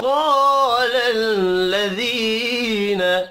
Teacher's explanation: قاف حروف مستعلیہ ہے پر پڑھا جائے گا